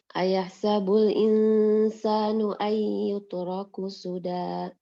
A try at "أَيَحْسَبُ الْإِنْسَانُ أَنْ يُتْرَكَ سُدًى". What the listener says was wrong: ayah sabul insanu ayyutroka, bukan yutrok.